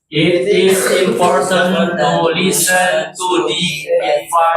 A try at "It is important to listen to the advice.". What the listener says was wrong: Can you speak or read faster? Like this. It is important to listen to the advice.